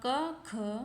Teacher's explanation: कंठ ध्वनियाँ आपकी क और ख हैं